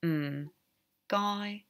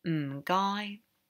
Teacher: Or if you just want to get their attention, you're ready to check out, you could say m'gai. And again, the m is low tone, m'gai. So it's quite an easy one to say because it's very distinct.